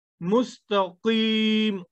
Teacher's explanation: قاف، حلق سے ادا ہوگا